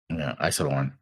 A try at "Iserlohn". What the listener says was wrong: You did it wrong again. Well, that time you said horn, which is not right. Iserlohn. Lohn.